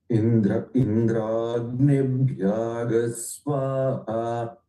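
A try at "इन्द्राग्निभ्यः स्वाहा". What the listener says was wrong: இன்னும் கூட ஒரு இக் ஆட் பண்ணலாம். It looks like you are sliding over to G, but Ig is. So you see how clearly I'm saying. Indragnibhyagas. You see the Ig பிடிக்கிற யாவோட? Bhyag. I'm catching a Ig with Bhya.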